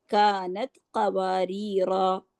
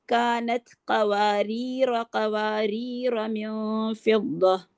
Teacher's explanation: جو پہلے والا قواریرہ ہے اس کا الف وقفاً پڑھا جاتا ہے، وصلاً نہیں پڑھا جاتا۔ جو دوسرے والا قواریرہ ہے اس کا الف جو ہے نہ تو وقفاً پڑھا جاتا ہے اور نہ ہی وصلاً پڑھا جاتا ہے۔